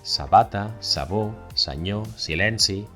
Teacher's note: la ese sorda, la que suena como una serpiente. Este sonido se representa mayoritariamente con una ese.